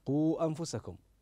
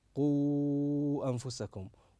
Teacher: فانه يجوز ان تقراها بالقصر اقرا قو انفسكم او التوسط قو انفسكم